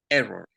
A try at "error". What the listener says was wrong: A ver, en español, error. A ver, bájale un poquito el E y hazlo más suavecito.